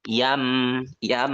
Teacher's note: Jadi nunnya kita rubah menjadi suara mim ya. Yam, yam. Nah, ketika ngucapin mim kan bibir dirapatkan ya. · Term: iklab